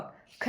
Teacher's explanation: ख जो है यह किस में आ जाएगा? अघोष और महाप्राण।